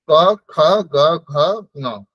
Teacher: কণ্ঠ বর্ণ এদের উচ্চারণ স্থান হচ্ছে কণ্ঠ ক খ গ ঘ ন টা হচ্ছে কণ্ঠ থেকেই আসবে কিন্তু নাসিকা সহ এর একটু নাকে উচ্চারণ হয়